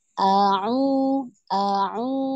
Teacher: pertama hamzah dari pangkal tenggorokan, kemudian naikkan lagi ke tengah tenggorokan